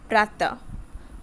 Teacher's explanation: इसका उच्चारण आधे ह की तरह होता है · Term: विसर्ग